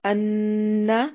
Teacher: نون مشدد پہ غنہ لازمی ہے، لمبا نہیں کرنا